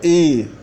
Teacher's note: O E longo é E, é um E puxando para o I